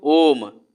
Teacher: ओ को खूब ज़्यादा खींच कर ले जाते हैं, जितना हमारे पास सांस रहता है उतना। उसके बाद अंतिम में क्या करते हैं, म हल्का सा बोलते हैं, है ना। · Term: प्लुत स्वर